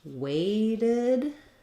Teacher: this Ted is going to sound like the word did because this T will be a flap and then we have to add a syllable so when a